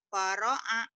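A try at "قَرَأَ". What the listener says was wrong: Paro'a. Kenapa paro'a? Orang titiknya dua.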